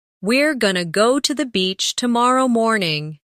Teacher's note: Going to often becomes gonna in casual speech.